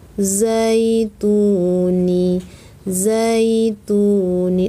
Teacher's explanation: Ni-nya pendek, za-nya berdengung, ya-nya pendek, zaituni.